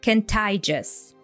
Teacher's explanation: So he drops T in the word just.